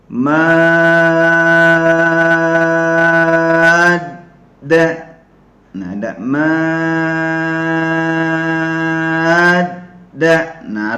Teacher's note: Jadi huruf Dal ada tasydid maka mimnya kita baca 6 harokat